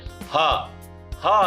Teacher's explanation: ಹ ಅನ್ನುವಂತಹ ಅಕ್ಷರ ಕಂಠ್ಯದಿಂದಲೇ ಹುಟ್ಟುತ್ತೆ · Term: ಕಂಠ್ಯಕ್ಷರಗಳು